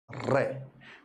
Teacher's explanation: जीभ थोड़ी ऐसे सिकुड़ती है गोल होती है फिर कंपन करती है · वह ध्वनि जिसके उच्चारण में जीभ गोल होती हो तथा कंपन करती हो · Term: प्रकंपित, लुंठित, लुंठित या प्रकंपी